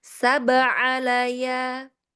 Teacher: di sini ada ba sukun ya, dia ada qalqalah